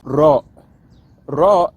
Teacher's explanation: raw is a rolled R and it's done by causing the tongue to vibrate